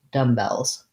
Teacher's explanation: the letter s says the z sound in dumbbells because uh the l is voiced